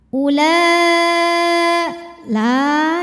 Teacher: Maka huruf lam dipanjangkan boleh 4, boleh 5 harokat. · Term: mad wajib muttasil